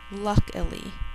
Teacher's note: This time we're adding a two-syllable suffix, I-L-Y, I-L-Y. The first syllable is the accented syllable, or the one that's emphasized, L-U-K. Then we have two unaccented syllables, I, L-I.